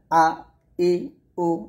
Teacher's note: হামজাটা হবে হলকের শুরু থেকে হলকের শুরু থেকে আপনাকে হামজার উচ্চারণ করতে হবে